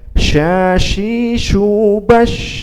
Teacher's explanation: ada nafas yang mengalir dari huruf shin itu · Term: hams